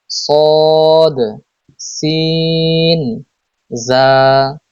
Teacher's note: 12 number মাখরাজ জিহ্বার আগা সামনের নিচের দুই দাঁতের পেট ও আগার সঙ্গে লাগিয়ে উচ্চারিত হয়